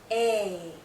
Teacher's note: Long sound. Our lips are still spread. It's tense, but it's open. More open compared to the other two vowel sounds we already talked about.